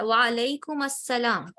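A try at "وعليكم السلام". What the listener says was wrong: میم کے اوپر دمہ ہے. السلام. جی یہ بہت کامن غلطی ہے.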